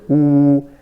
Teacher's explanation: The waw, the lips are the most important point where the lips have to be rounded.